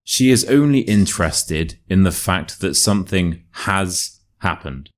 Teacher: we have the unstressed function words so the and that then we have the stressed function word so has